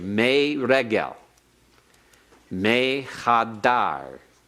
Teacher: the hirik is heightened to a tseri